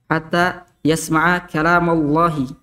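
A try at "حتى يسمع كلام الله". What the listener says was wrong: Terlalu cepat tebalnya tak? Terlalu cepat tebalnya. Ma tidak tebal. Hatta yasma'a kalamallahi. Kalamallah. Kalama. Jadi Allahnya itu yang di tengahnya itu yang tebal, bukan yang pertama.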